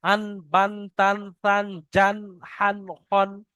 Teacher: তা দু জাবার তান। দেখেন আওয়াজ নাকে যাচ্ছে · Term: দু জবরের পড়া